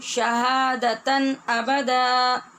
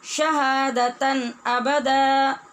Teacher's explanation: دو زبر کی تنوین کے بعد حمزہ حروف حلقی میں سے ہے، لہذا اظہار حلقی ہوگا